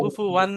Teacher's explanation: হরফে হলকি হামজা হা আইন হা গইন খয়ের মধ্যে হামজা এসে, তাই তানবিনের আওয়াজকে বিনা গুণায় তাড়াতাড়ি পড়তে হবে। জাহির করে কুফু ওয়ান বলে গুণা করা যাবে না। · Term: ইজাহারের কায়দা